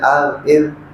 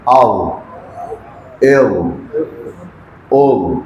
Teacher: یہ بھی اس کا مخرج بھی یہی ہے، زبان کی نوک اور اگلے 2 دانتوں کا سرا۔ ذال اور وے میں فرق صرف اتنا ہے کہ ذال کو باریک پڑھتے ہیں ال، اور وا کو موٹا کر کے پڑھتے ہیں